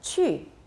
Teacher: the fourth tone starts pretty high